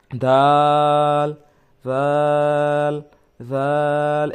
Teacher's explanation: লাগাইয়া বলতে ভিতরে ঘোড়ার সঙ্গে লাগাইয়া দাল দাল একটু নরম করেন জিহ্বার আগার সামনের উপরের দুই দাঁতের আগার সঙ্গে লাগাইয়া